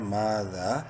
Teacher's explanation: دونوں کو ایک ایک الف کے برابر لمبا کریں گے آپ دیکھ سکتے ہیں دونوں الف مدہ ہے